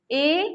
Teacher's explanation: ए का कंठ तालु है, यानी दोनों मिल करके बोला जाता है, कंठ और तालु दोनों से मिला करके बोला जाता है